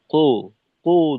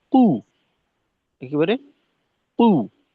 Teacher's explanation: পেশের উচ্চারণটা কিছুটা ওকার মুখী হয়ে যায়। কো, কো ধরনের না, কু, একেবারে কু।